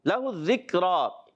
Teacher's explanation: لَهُ الذِّکْرَى, ذکرہ میں کاف کو باریک رکھنا ہے, را پر کھڑا زبر ہے, اور ایک الف کھینچ کر ادا کریں گے. وقت میں بھی اس کو ایک الف کھینچ کر ہی پڑھیں گے.